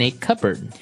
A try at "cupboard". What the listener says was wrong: Okay, so you might want to say cupboard because it's cup, C-U-P-B-O-A-R-D. That's not right. The word is pronounced cupboard. cupboard. Cupboard.